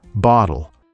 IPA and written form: ˈbɒɾl̩ (bottle)